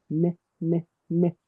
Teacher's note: That's the letter N. That's with your tongue touching your teeth. N. You can feel it.